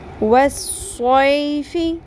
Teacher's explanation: والصیف، صو زبر یا صوئی حروف لین اور صاد کو پر کے ساتھ صاد میں سیٹی کی بھی آواز آنی چاہیے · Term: سیٹی کی آواز